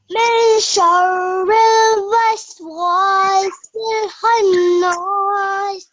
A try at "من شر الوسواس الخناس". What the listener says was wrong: Good. Well done.